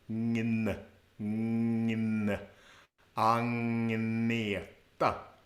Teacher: So with the first name, Agneta, the GN actually becomes NGN. Ngn, ngn.